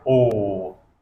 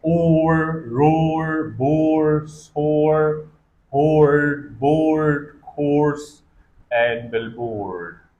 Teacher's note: Long back vowel with rounded lips, equivalent to long uguduaw in Pashto, like O. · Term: O sound